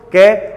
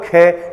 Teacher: क की तुलना में ख को बोलने में ख का उच्चारण करने में हवा जो होगी अधिक निकलेगी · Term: महाप्राण व्यंजन